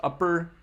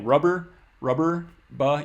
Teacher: You stop voicing in the middle of that word for the P.